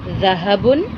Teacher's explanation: یعنی کہ وہ جگہ جہاں سے اس حرف کی آواز نکلتی ہے، زبان کی نوک کو اوپر کے 2 دانتوں کے سرے سے لگائیں گے تو ذ ادا ہوگا۔ تو بچوں، اس کا مخرج بھی ث کے مخرج کی طرح ہی ہے، سیم ہے بالکل۔